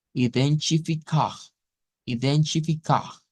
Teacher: cuando se une la T, se hace un africado que nos genera el sonido CH.